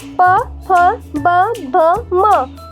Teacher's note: प, फ, ब, भ, म, ओष्ठ्य, ओठों की सहायता से बोला जाता है